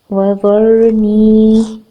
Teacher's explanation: را ساکن سے پہلے والے حرف پر زبر ہے، را ساکن کو پور پڑھا جائے گا.